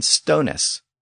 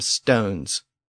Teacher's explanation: by the time of Modern English that ending had been slurred to just an s in most cases so stonis had become stones and giftst